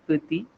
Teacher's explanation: the word for small in French is petit, T is silent at the end